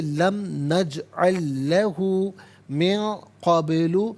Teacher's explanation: نجعل میں لام ساکن، اس کے بعد لام آ رہا ہے تو اسے اس کے ساتھ ملائیں گے